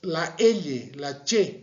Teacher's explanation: la lengua está haciéndose más hacia la parte media del paladar